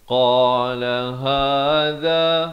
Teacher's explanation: ha di pangkal kerongkong, za di hujung lidah